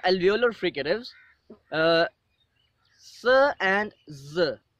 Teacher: the tip of the tongue approximates the alveolar ridge or teeth ridge